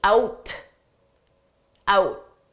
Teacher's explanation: When I say out, I'm not going to pronounce that T out, out. The T is just silent. · Notice how we can combine out tonight together. When I say out, I'm not going to pronounce that T.